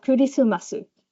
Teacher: you get extra vowels in between the consonants to make them easier to say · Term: penesis